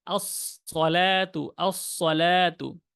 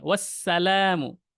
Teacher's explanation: একটা হচ্ছে সদ মোটা, আস-সলাতু, তারপরেরটা হচ্ছে আসসালামু, চিকন